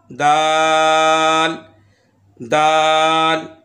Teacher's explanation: इसका मखरज ज़बान की नोक और ऊपर के दांतों की जड़ से अदा होता है और इसे हरफ़े नितइया भी कहते हैं।